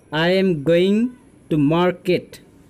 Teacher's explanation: there is a fall of the voice from a very high note to a very low note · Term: falling